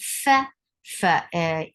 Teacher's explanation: Fa is hams letter. You will give hams whenever you will see fa, and hams is a flow of breath.